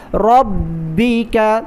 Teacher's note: را پر زبر ہے، را کو موٹا پڑھیں گے، را کو با کے ساتھ ملا کر پڑھیں گے سختی کے ساتھ